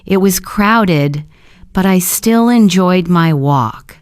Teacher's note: the pause before but adds emphasis.